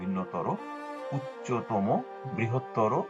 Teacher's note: তর, তম প্রত্যয়যুক্ত বিশেষণ পদের অন্ত অকার ওকার রূপে উচ্চারিত হয়। যেমন ভিন্নতর, এখানে এই র এর সাথে একটু অ ছিল, অটা ও রূপে উচ্চারিত হয় ভিন্নতর, উচ্চতম, বৃহত্তর ইত্যাদি।